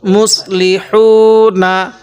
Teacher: মিম সদ পেশ মুস, লামজরলি মুস লি, হা ওয়াও পেশ হু, নুন জবর না, মুসলি হু না, মুসলি হু না। হাটা উচ্চারণের সময় মুখ দিয়ে হালকা বাতাস বের করব,